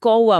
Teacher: हमारा गला खुद ब खुद बीच में व की ध्वनि पैदा कर लेता है और हम कौवा की जगह कौवा बोलने लगते हैं। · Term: अर्ध स्वर